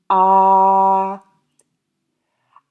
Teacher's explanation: The first time, I'll produce pitch and tone, creating a voiced ah. Ah. I have vibration in the vocal cord, but I also have not so much of a rough flush of air. · I have vibration in the vocal cord, but I also have not so much of a rough flush of air. It's more like I'm speaking naturally while inhaling and exhaling.